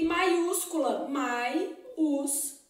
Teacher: o I é semivogal seguido do U, que é uma vogal. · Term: falso hiato